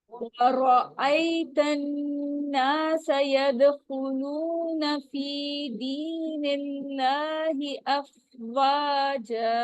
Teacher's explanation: وا پہ ہونٹوں کو بالکل گول کرنا ہے ہم نے